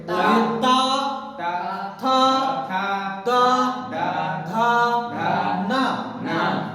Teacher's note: दंत से बोले जाने वाले वर्ण है बाबू।